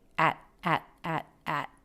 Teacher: the word at often reduces to the schwa sound she doesn't do that she does have an a vowel